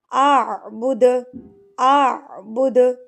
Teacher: اب دال پہ جب سکون ہوتا ہے تو اس پر قلقلہ کیا جاتا ہے۔ قلقلہ کہتے ہیں ہلا کے ترتراہٹ سے پڑھنے کو۔